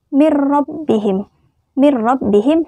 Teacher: memasukkan huruf pertama ke dalam huruf kedua dengan tidak berdengung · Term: idghom Bila Ghunnah